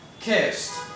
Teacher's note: the S is actually a voiceless consonant and it doesn't have any vibration in the throat. So therefore, we pronounce it like a t.